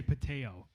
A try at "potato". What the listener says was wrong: left out the second T.